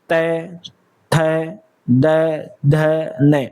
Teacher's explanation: आपकी जीभ आ रही है दांतों के बीच में तो दंत्य वर्ग · दंत्य, दांत का प्रयोग, त, थ, द, ध, न, आपकी जीभ आ रही दांतों के बीच में